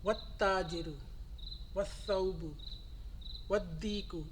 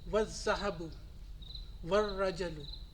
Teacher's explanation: So in the sun letters, when the particle comes in the beginning of the noun, the al sound is omitted.